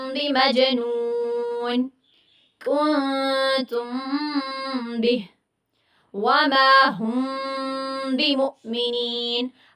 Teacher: ہر جو میم آ رہی ہے فرسٹ ورڈ کے لاسٹ میں، اور ہر جو با آ رہا ہے دوسرے ورڈ کے شروع میں، تو میں نے سب پہ ٹائم دیا ہے کیونکہ غنہ ہو رہا تھا۔ یہاں پہ ہم نے ڈیفینیشن میں بھی کیا پڑھا تھا کہ اگر میم ساکنہ کے بعد حرف با آ جائے جو کہ متحرک ہو، تو اس میں ہم نے میم کی آواز کو غنہ کے ساتھ چھپا کر پڑھنا ہے، اور یہ کیا ہوتا ہے؟ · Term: اخفاء شفوی